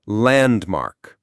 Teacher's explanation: The stress is on the first syllable.